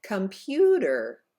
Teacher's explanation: the second syllable is held out longer for a count of two because it is the stressed syllable